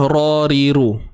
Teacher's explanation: ra baris atas tebal, ra baris depan tebal, ra baris bawah nipis, ra, ri, nipis, ru, tebal balik. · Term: asas huruf ra